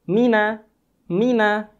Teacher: huruf mim kita keluarkan dari dua bibir secara bersamaan dengan cara Hai gempi bakok yaitu dengan cara merapatkan Dwi kita